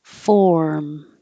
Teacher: I'm still holding my tongue in the R position as I close my lips for the M.